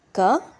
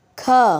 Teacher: ಮೊದಲ ಅಕ್ಷರ ಅಲ್ಪಪ್ರಾಣ ಎರಡನೇ ಅಕ್ಷರ ಮಹಾಪ್ರಾಣ ಆಗಿ ಹೋಗುತ್ತೆ